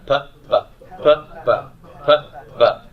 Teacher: No, your lips are exactly the same. So what's the difference? Yes. The only difference is what's happening in the throat.